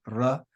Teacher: We then have the letter ro, which is like an R, but it's got that Spanish trilled sound to it